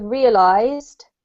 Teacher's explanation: with the word realized there's a z sound whether you use an s or not